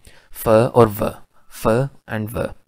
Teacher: lower lip touches और make contact with the upper teeth